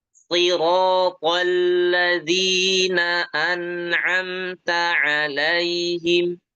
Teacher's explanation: lihat huruf to-nya tebal tapi alladzina tipis.